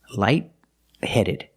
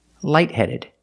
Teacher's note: The T in light is a stop T, light-headed. You put the tongue up to stop the air, but you don't release the T. You don't say light-headed.